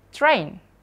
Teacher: R-nya masih di tengah nih, tapi sebelumnya dia di depannya ada bunyi konsonan. Maka R-nya juga dibaca rhotic juga.